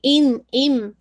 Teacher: ادغام کامل کا مطلب کیا ہے کہ sound of the تنوین completely merge into میم، ٹھیک ہے؟ تو رن کے بجائے رم کی آواز آئے گی، ان ام، ٹھیک ہے؟